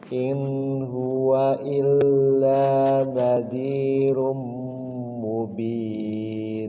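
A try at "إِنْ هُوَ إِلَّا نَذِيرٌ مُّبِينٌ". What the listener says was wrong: Sekali lagi, innya izhar ya. In huwa langsung.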